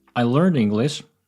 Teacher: consonants and vowels get connected in most cases, so it's not “learned English”, it's more like “learn dEnglish.” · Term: word connections